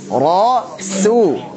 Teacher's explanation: Jadi ra tebal, su tipis. Ra, su. Startnya dari makhrajnya su.